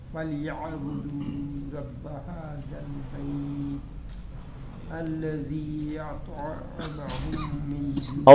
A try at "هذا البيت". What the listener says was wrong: اس میں هذا البيت بھی سیٹی کی آواز نہیں آئے گی، ذال ہے، هذا البيت نہیں، زنی ذل، هذا البيت نرمی سے نکلتا ہے اور دونوں دانتوں کے درمیان میں زبان آنے کے بعد یہ حرف ادا ہوتا ہے.